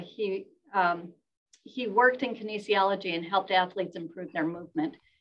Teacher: we have the rise in pitch at the beginning of the sentence and it rises rather high and then we have a bit of a rise here before · we have a bit of a rise here before the pause and that's telling the listener i'm not done yet